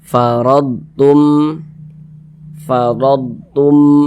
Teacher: huruf ro yang memiliki tanda baca fathah maka dia dibaca tebal dibaca tkhim sehingga pangkalisan kita itu naik terangkat ke atas ketika